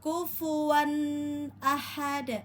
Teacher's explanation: Pada wau tanwin bertemu dengan hamzah maka dibaca jelas izhar halqi wan ya perhatikan atau pastikan tidak terpantul. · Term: izhar halki